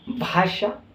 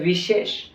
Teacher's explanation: भाषा शब्द जब हम बोलते हैं तो जीभ हमारी जो होती है वो तालु से टकराती है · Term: मूर्धा